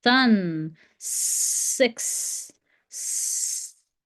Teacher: S. No vocal cords being used.